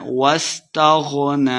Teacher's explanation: غین کو موٹا پڑھنا ہے